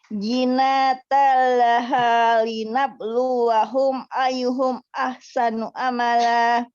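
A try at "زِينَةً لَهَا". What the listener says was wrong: Oke, zi-nya panjangkan ya. Zinatallaha linabluwahum.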